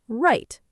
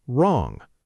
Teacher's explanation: we say write without any w sound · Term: silent w